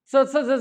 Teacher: दाताच्या पाठीमाग जो खडबडीत भाग आहे तिथं जिभेचा शेंडा टच व्हायला. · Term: दंत तालव्य